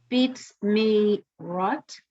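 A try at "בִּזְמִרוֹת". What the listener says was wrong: It's bees. That's a Z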